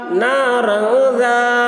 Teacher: تنوین کے بعد حروف اخفا میں سے ذال آ رہا ہے، اس لیے تنوین کی آواز کو ناک میں چھپا کر پڑھیں گے، اس کو اخفا کہتے ہیں۔